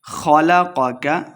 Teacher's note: خ اور قاف دونوں کو موٹا پڑھنا ہے، لمع بالکل نہیں کریں گے